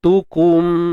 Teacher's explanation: ta baris depan tu, muncul bibir.